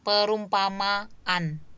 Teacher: Jadi seperti ada stop atau seperti ada jeda setelah kata setelah fonem ma. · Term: glottal stop